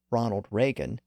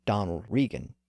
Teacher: Reagan reflects an older, more traditional pronunciation with the vowel in position number 2, like in break and stake. And Regan reflects a more modern pronunciation with the vowel shifted up to position number 1, as in seat and leaf.